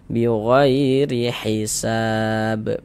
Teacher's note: Sebelum ya sukun ada harokat fathah. Maka huruf ya sukunnya adalah huruf lin yang kita baca lunak lembut.